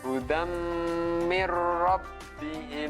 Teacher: ini termasuk bacaan Idgham Bighunnah ini baru mendengung Idgham Bighunnah suaraan tanwinnya masuk ke huruf setelahnya huruf mim dengan mendengung